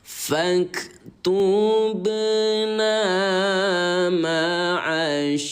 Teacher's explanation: Contoh di sini kode warna ungu yaitu ba yang baris mati. Maka cara bacanya yaitu dengan cara dipantulkan